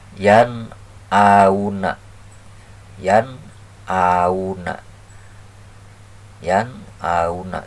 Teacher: kalimah fil mudori sahabatku ya maka kita baca jadi jelas Nun nun sukun menghadapi Hamzah bertemu dengan Hamzah maka dibaca jelas